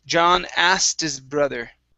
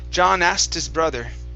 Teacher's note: so we drop the k and we only pronounce the t